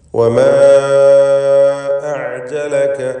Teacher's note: വമാ അഅ്ജലക, ഇവിടെ വമാ എന്നതിലെ ദീർഘം മദ് മുൻഫസിൽ ജായിസ് എന്നതാണ്. 4-5 ഹറക്കത്തിൻ്റെ അളവിൽ അലിഫിനെ ദീർഘിപ്പിക്കേണ്ടതാണ്. വമാ എന്നതിലെ അലിഫും അടുത്ത പദത്തിൻ്റെ ആരംഭത്തിലുള്ള ഹംസയും ഇങ്ങനെ ദീർഘാക്ഷരവും ശേഷം ഹംസയും വേർപിരിഞ്ഞു വന്നതാണ് ഈ ദീർഘത്തിനുള്ള കാരണം.